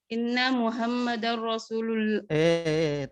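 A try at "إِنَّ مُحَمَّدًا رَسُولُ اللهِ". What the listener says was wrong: Tambah Muhammadan. Kasih jelas. Muhammadan dan kasih jelas. Muhammadan diizhar, dikasih jelas.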